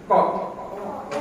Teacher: Kop kita harus memposisikan pangkal lidah dulu, ditekan dulu ke atas. Kop. Itu hambatannya, terhambat ya. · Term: ismat